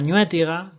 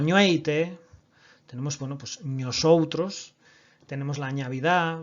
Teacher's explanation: Este rasgo ya sí que es más minoritario y que se da con mucha personalidad en la comarca de Cabreira, que ya la palatalización de la N inicial del latín, ¿de acuerdo? La N inicial en palabras patrimoniales genera una ñ